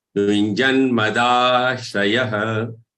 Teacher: ya with a visarg, which is to be pronounced as aha.